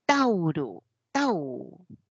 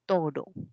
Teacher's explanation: convierte en uno solo Au pasa como o y dice oro lo que era diptongo se convirtió en una sola vocal ese proceso se llama monoptongo · Y pasa al castellano ese tau como una O y decimos toro. Eso es monoptongación.